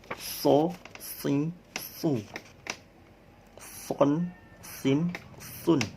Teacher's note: huruf so itu belakangnya naik, ujung lidahnya naik, jadi tebal suaranya. So, kalian coba praktekkan lidahnya di sini, kemudian pangkal lidahnya dinaikkan, kemudian mengucapkan so.